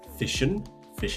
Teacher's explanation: Here we have a sh sound, and it links to the and.